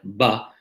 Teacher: with a consonant like ba, the onset of the sound is quite sudden